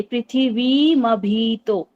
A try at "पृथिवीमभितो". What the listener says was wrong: हाँ, म में हलंत हो गया था।